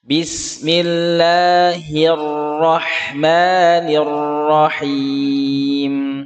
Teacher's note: getarannya ada di ujung lidah itu lembut tidak kasar tidak boleh dibaca kasroh nya seperti bahasa indonesiacontoh yang salah Bismillahirrohmanirrohim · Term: getaran ujung lidah